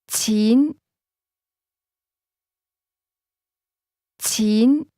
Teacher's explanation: Money is pronounced with a mid- rising tone.